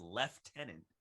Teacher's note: is pronounced lieutenant with a hard f